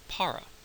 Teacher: you're probably going to pronounce that word par with a aspirated P that's what that small H indicates and a very English sounding